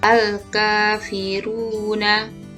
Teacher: ka dibaca panjang 2 harokat atau ketukan dan dinamakan mad asli atau mad tabi'i